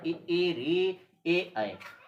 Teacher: वे स्वर जिनके उच्चारण में जिह्वा का अग्रभाग प्रयुक्त होता है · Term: अग्र स्वर